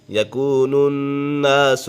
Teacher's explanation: یکون الناس، نون مشدد ہے، نون مشدد میں ہمیشہ غنہ ہوتا ہے